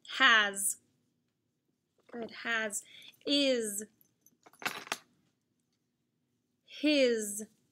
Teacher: It's an S, you're right. The voiced, the letter S makes the Z sound in these words.